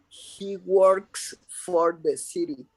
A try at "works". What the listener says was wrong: Remember to pronounce correctly the final S. Works.